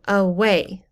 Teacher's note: the second syllable is said more loudly